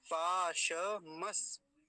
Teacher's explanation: दंती सकार आधा है इस पर रुकेंगे थोड़ी देर